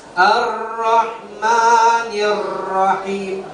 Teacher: Ra ini dia punya satu sifat namanya takrib. Dia bergetar, ujung lidah saja, tidak sampai keseluruhan lidah kita bergetar.